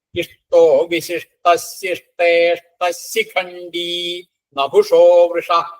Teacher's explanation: ഇവിടെ രണ്ടു വരിയും കൂടി വരുന്ന സമയത്ത് ഇഷ്ടോ വിശിഷ്ട ശിഷ്ടേഷ്ടശിഖണ്ഡി എന്ന് വരും. അവിടെയും ആ വിസർഗം ശ് എന്നായിട്ട് ശിഖണ്ഡി ശിഖണ്ഡി എന്ന് വരും.